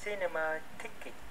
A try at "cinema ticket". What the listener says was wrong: Đây, em thấy em đọc chữ ticket không? Em đọc chữ ticket, em có cảm thấy chữ tick không? Chữ tick nó có âm x á.